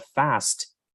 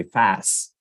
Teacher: attention to the Clusters instead of saying the word fast uh in African-American English one might say fast and not say the T in the end